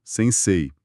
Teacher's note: O pessoal tende a falar sensei, mas o certo é dar uma alongada no e final